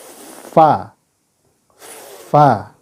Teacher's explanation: tempat keluarnya adalah bibir bawah bagian dalam bertemu dengan gigi depan atas jadi bibir bawah sini dalam ya ketemu gigi Va Va ya